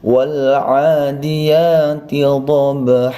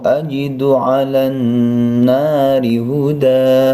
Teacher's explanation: Padahal kalau seperti ini dia termasuk mad iwad ya. Dia diberi harokat fathatain, maka wajib tetap dibaca panjangnya hanya 2 harokat.